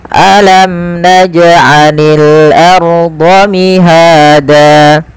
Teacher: Alam, jelaskan mimnya karena dia izhar syafawi